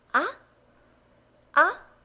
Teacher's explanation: It goes from a lower level to a higher level. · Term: second tone